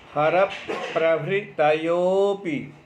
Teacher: प और र के मध्य में अ आदि कोई भी स्वर नहीं है, इसलिए प को आ के साथ बोलेंगे रभृतयोपि, रप प्रभृतयोपि। जब शामिल करके बोलते तो लगता है पकार का उच्चारण हमने 2 बार किया है, परंतु कोई उसमें दोष की बात नहीं है, ये बलाघात पड़ता है। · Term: संयुक्त